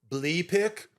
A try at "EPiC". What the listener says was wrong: you're calling it bleepic now. You're not even calling it epic.